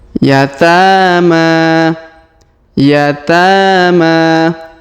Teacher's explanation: huruf ta kita panjangkan dua harakat karena Alif kecil di atasnya huruf Ma kita panjangkan dua harakat karena Alif kecil di atasnya dan juga ada alif bengkok atau Alif maksurah di depannya yatama